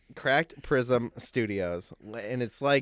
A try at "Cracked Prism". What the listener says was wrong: No, you said pracked that time. You did not say cracked.